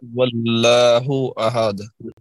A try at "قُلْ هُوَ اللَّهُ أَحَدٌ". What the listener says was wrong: آپ موٹا اور اونچا، واو جو ہے اس میں ظاہر ہونا چاہیے۔ احد